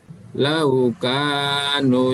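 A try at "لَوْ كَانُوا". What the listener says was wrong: Panjang. Lau kanu, nunya 2 harakat.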